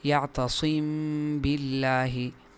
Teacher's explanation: جیسے یعتصم باللہ، تو یہاں میم ساکن کے بعد با آیا ہے، ایسی صورت میں میم کو ہونٹوں کی نرمی سے ادا کرتے ہوئے اس میں غنہ کریں گے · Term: اخفا